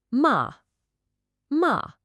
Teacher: you just start high, drop fast, and end low. · You're going to start the sound ma at the absolute top of your vocal range. Then drop it sharply, decisively, just like you're saying nope, and make sure you land at the very bottom of your range. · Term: assertive tone